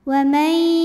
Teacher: Karena ada nun sukun yang menghadapi huruf ya, maka bunyi nunnya masuk ke ya, wa may, dan ditahan, didengungkan. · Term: idgham bil gunnah